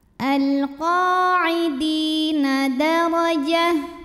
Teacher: Alal qa'idi di mad tabi'i zahiri, karena ada ya sukun didahului kasrah, maka dal panjang 2 harokat.